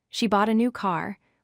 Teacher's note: We stress new and car because they carry the main meaning. We do not stress the article a.